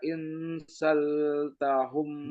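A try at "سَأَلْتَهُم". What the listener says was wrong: Bukan sal tapi sa'al tahum. Humnya ditahan. Sa'al tahum man.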